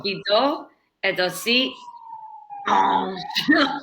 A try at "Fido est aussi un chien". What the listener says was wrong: so no, okay, you don't need to overdo it that much. It's just a little bit, like that.